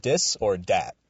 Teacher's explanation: Dis or Dat, with a D on the front, because Marty Biron is physically incapable of pronouncing the TH sound to say this or that. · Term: French accent